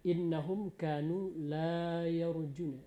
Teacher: Kemudian innahum kanu la yarjuna, la itu 2 harokat panjangnya